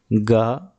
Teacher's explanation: गा घोष और अल्पप्राण कहलाएगी।